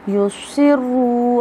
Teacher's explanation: اب دیکھیے را مشدد ہے، موٹا پڑا جا رہا ہے